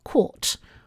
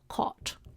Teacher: in many varieties of English spoken in the UK, the past tense of catch has a mid-back rounded vowel, caught, while the noun version has the low-back vowel, caught. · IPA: kʰɔt